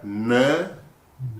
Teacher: the curling of the tongue and flapping on the upper palate